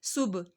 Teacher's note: با کا کلکلا، کلکلا والا با ہے، سین کی سیٹی.